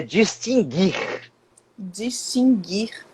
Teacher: Distinguir, não pronuncia o U